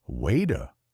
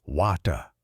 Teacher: Imagine hearing water in an American movie. It sounds like wader. Then in a British show, it sounds like wata.